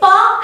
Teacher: this is bilabial it involves the two lips